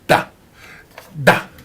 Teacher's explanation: La consonne D, par exemple, se prononce en donnant du bout de la langue au-dessus des dents du haut